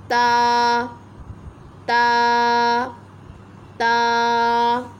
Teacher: ता जो है वो ज़बान की नोक जब ऊपर के अगले दोनों दांतों की जड़ की तरफ वाले आधे हिस्से से लगेगी तो आपका ता अदा हो जाएगा। इसको भी हम एक अलिफ के बराबर खींच कर पढ़ेंगे।